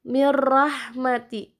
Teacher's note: Nun matinya tidak terbaca, jadi langsung mirrahmati, masuk kepada ro tanpa dengan dengung. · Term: idgham bila gunnah